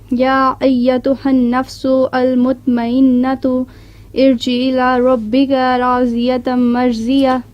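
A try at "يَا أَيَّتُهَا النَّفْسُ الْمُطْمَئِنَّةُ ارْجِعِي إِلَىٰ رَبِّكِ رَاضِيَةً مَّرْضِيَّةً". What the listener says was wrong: نو دیکھو الی ربک کے ہے، کاف کے نیچے زیر ہے، چونکہ جس کو پکارا جا رہا ہے وہ مؤنث ہے اس لیے رب کا نہیں آئے گا بلکہ رب کے، تمہارے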